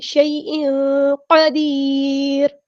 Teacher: نرمی سے موڑیں گے، حمزہ کے نیچے 2 زیر ہے، یعنی تنوین کی آواز کو ہم نے یہاں چھپا دینا ہے